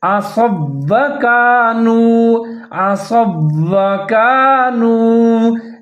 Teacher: تو دونوں واو کو ہم ساتھ میں ملا کے پڑھیں گے، مضبوطی کے ساتھ پڑھیں گے، اس طرح سے پڑھیں گے، عَصَوْا وَكَانُوا، عَصَوْا وَكَانُوا يَعْتَدُونَ، یعتدون، یہاں پر یا کو عین کے ساتھ ملا کے پڑھیں گے اور عین کو ظاہر کر کے پڑھیں گے، یعتدون۔